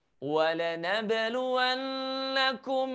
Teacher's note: pastikan ada huruf nun tasjid yang harus kita dengung walanabluwannakum tidak boleh tergesa-gesa walanabluwannakum tidak boleh terburu-buru ya harus ditahan